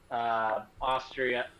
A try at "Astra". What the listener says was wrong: Austria. It's Austria, yeah. It's like Austria without the I. Austria.